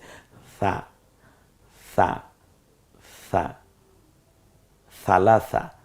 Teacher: জিহ্বার আগা সামনের দাঁতের আগার সাথে মিলিয়ে আপনি স বলুন, দেখবেন নরম হয়ে গেছে। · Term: নরম আওয়াজে